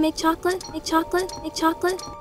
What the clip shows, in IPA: ˈtʃɔk lɪt